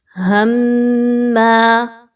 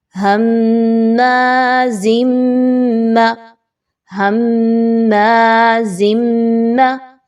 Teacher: سختی آ رہی ہے، غنہ بھی آ رہا ہے، آواز ناک میں بھی جا رہی ہے میم مشدد کی وجہ سے